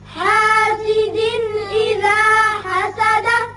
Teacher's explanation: حاسد یہاں دو زیر تنوین ہے, نون کی آواز پیدا ہوتی ہے, آگے حمزہ بشکل الف ہے جو کہ حروف حلقی میں سے ہے, لہذا یہاں اظہار ہوگا نون کا. اذا حسد دال ساکن ہو جائے گی, آیت ختم ہوتی ہے تو دال کی صفت قلقلہ حسد کر کے پڑھیں گے.